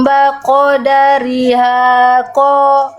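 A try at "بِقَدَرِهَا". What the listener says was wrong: Iya, bukan baqadariha, tapi biqadariha. Tadi Bunda baca jadi fathah, harusnya kasroh, ya.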